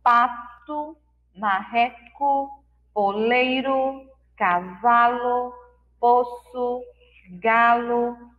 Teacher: parece com a letra U, mas como o U está fraquinho, mais suave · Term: U fraco